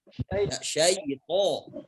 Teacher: jadi ya sya dengan ya ini makhrajnya sama. Ya, sama-sama di tengah lidah. Ya, jangan masukkan ya-nya syaitan, salah.